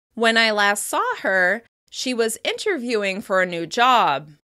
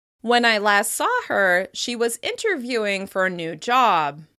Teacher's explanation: you can hear that slight rise that signals that I'm not quite done with the thought